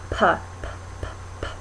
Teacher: you're closing your lips, p, and then releasing them, but it's with your lips.